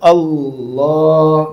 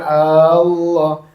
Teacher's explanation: Huruf ' A' tidak panjang, langsung ke Allah, jangan diucapkan Aaa-llah